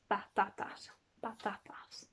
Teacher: There's no plosive p sound. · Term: softer